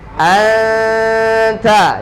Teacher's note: non sukun ketemu tak dibaca dengung